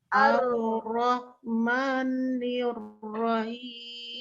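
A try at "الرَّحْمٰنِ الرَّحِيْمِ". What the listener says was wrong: Ya, jangan manyun ya. Ro. La. Ro. Na. Ar. Terbuka. Enggak boleh monyong. Ar-Rahmanir-Rahim. Ar-Rahmanir-Rahim. Jadi begitu ya, tetap di mahrotnya. Karena dia pakai lidah, bukan pakai bibir. Jadi bibirnya enggak boleh eksis.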